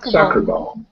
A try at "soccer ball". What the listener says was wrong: Yeah, because when you're thinking too much about the whole word, soccer ball, you're not dropping it. So it's like, you start off, soccer, I'm done. And that's the sound we're getting. That's why it drops.